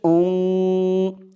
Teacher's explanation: হামজা নুন পেশ উং, ইকফা গুন্নাটা নাকের ভিতরে লুকিয়ে করতে হয়